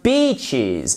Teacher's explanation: Donc, ne dites pas bitches, mais bien beaches avec le I long